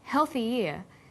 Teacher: When healthy is linked together with ear, a y sound is added.